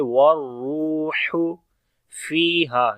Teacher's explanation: ہا کو گلے کے درمیان والے حصے سے پڑھیں گے